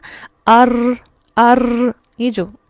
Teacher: یہ وائبریٹری ساؤنڈ جو ہوتی ہے اسے کہتے ہیں تکرار